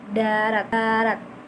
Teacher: Yang kedua ada kata D. Ada huruf fonem D seperti T, tapi pita suaranya itu tuh bergetar gitu